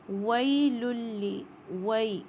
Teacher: یا ساکن سے پہلے زبر ہے تو یہ 2 کاؤنٹ ہوئے گا، اور یہ یائے لین ہے، یا ساکن سے پہلے اگر زبر آئے گا تو یائے لین بن جائے گا۔